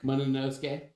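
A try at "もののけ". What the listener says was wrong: There's no S in there. Monoke.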